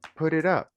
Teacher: we have to pronounce the T between two vowels like an R